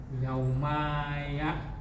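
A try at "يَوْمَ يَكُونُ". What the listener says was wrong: Ma-nya pendek. Yauma Yauma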